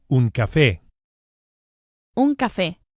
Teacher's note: we emphasize the e vowel on account of the accent, which indicates the stress, the strong syllable, un café, and not café.